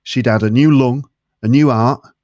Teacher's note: he drops the t in the word heart